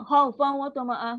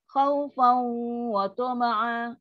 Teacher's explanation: Tapi kalau khawfan wa tama'a, sebab dia dengung paling sempurna, kategori paling sempurna. So dengung yang panjang.